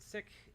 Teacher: the correct pronunciation of the word sick is with a short I and an aspirated K